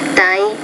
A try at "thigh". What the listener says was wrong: No, it's not die, it's thigh. So this is an interdental consonant. Okay, I think on this one you do need to practice the interdental consonant also.